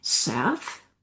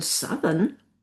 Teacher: in southern, the ow turns to an ah, but the spelling stays the same.